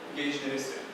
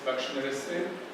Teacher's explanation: phonetically speaking, it's regular pair of a front vowel as opposed to a back vowel